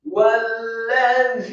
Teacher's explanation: Yang pertama adalah wawu yang harokatnya fathah satu harokat, kemudian setelahnya langsung ditekankan ke huruf lam yang tasydid